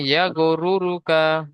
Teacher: রয়ের উপরে পেশ এসেছে, তাই র কে পুর করে পড়তে হবে